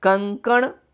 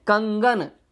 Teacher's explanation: कंकण शब्द में जो दूसरे स्थान पे क है वह परिवर्तित हो गया ग में और कंकण शब्द कंगन में बदल गया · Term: विषमीकरण